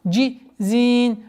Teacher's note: При остановке фатха переходит в сукун. И долгота у нас в размере 4 огласовок причины остановки